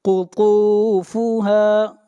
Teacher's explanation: قاف، قاف کو موٹا پڑھیں گے، قاف حروف مستعلیہ میں سے ہے، قطوفها، اور طا بھی حروف مستعلیہ میں سے ہے، طا کو موٹا پڑھیں گے اور طا کو کھینچ کر پڑھیں گے ایک الف کے برابر، یہاں پر واو مدہ ہے۔